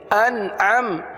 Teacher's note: نون پر قلقلہ نہیں ہوتا، نون میں آواز کو جمائیں گے، قلقلہ نہیں ہونے دیں گے